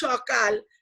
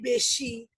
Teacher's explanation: সকালের দন্ত স এর উচ্চারণও যা, তালিবস্যর উচ্চারণও তাই